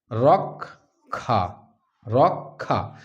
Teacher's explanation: তাহলে কটা আগে চলে আসছে খটা পরে হয়ে যাচ্ছে